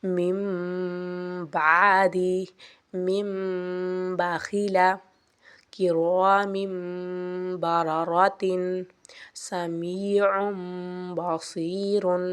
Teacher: نون ساکن کو میم میں بدل کر غنّہ کریں گے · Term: اقلاب